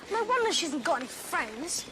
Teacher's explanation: we can hear a small rise at the end of friends · This is a negative statement. Ron here uses a full rise to make a guess as to why Hermione hasn't got any friends.